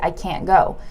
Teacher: the problem is in fast speech we eliminate the T